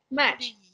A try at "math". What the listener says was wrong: There's a TH, math. It's not match, like it's not MATCH. It's not that. It's math and a very soft H. Math. Math.